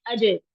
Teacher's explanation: कलकला की सिफ्त की वजह से जुबान को हमें फौरन छोड़ना पड़ता है यहाँ से, यानी कि हमें फौरन इसको हटाना पड़ता है।